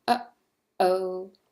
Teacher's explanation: It's the sound that you make when you stop your airflow way down your throat with the glottis, as in uh-oh. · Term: glottal stop